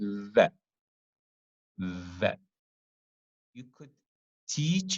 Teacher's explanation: There is a voice, there's a vibration in your vocal cords, and you could feel it when you touch your throat. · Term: voiced